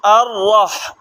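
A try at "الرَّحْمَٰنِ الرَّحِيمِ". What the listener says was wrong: এই দেখেন এ রল উপরে লেগে যাচ্ছে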